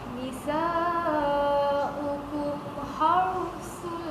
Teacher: Kemudian ha mati dia asas mulut ya, bibir dia bawa kena tebalkannya ra, dia kena tafkhim. Ra tu kena jadi tebal. Kalau ra nipis, kalau buat tadi had, dia jadi tarqiqur ra.